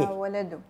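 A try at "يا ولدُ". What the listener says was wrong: या वलदु, या वलदो, लंबा खींच कर नहीं, या वलदो नहीं, या वलदो नहीं, या वलदु।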